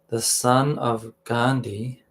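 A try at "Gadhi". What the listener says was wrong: There's no N.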